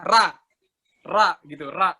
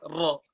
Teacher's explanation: Andaikan lidah belakangnya kita turunin, istifal, jadi kayak bahasa Indonesia